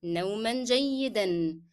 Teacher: نوما will be pronounced with the sound of N because I connected to the following word